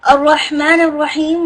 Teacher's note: Ra with the full mouth, Ha inside the middle of your throat